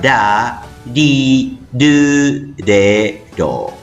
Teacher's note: La R en japonés se pronuncia como una vibrante simple y no como una vibrante múltiple. Esto quiere decir que la R en japonés suena en forma suave.